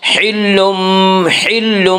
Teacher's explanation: اس کا قاعدہ ہے کہ نون ساکن اور تنوین کے بعد اگر با آئے تو قلب ہوگا، یعنی نون ساکن اور تنوین کو میم سے بدل کر غنہ کے ساتھ پڑھیں گے۔ یہاں تنوین کے بعد با ہے، اس لیے تنوین کو نون میم ساکن کے سے بدل کر وہ میم ساکن سے بدل کر غنہ کے ساتھ پڑھیں گے۔